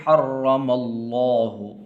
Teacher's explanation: لفظ اللہ کو پر کر کے پڑھنا ہے